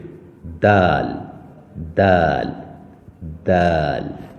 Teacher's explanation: کر ادا ہوگا دال، جیسے تا ادا کیا تھا اسی طرح زبان کا سب سے اگلا حصہ سامنے کے دو دانتوں کی جڑ سے لگا کر ادا کریں گے